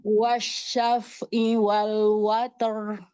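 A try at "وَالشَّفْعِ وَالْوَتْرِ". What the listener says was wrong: Sempurnakan huruf ain. Wasyaf'i. Wasyaf'i wal watar.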